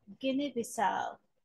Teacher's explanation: stressed on the last syllable which is the fourth syllable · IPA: /gɪni:bɪsaʊ/